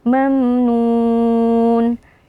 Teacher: Mim sukun yang berjumpa dengan huruf nun hukumnya adalah izhar syafawi cara membacanya mim sukunnya dijelaskan tanpa berdengung